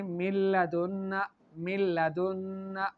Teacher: یہاں پر نون مدغم ہو گیا لام میں، لیکن اس میں غنہ نہیں ہوگا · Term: ادغام